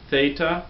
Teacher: Theta has the th sound the the voiceless th sound